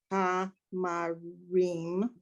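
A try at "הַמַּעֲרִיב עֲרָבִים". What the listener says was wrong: No, I want to hear all the syllables. No, last one. Say it again. Okay, same root there, one B.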